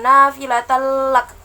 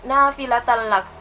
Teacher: Itu bacaannya idgham bila gunnah, artinya tanpa dengung.